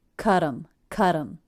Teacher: We're attaching it to the word And because the T now comes between two vowels, I turned that T into a flap or a light D sound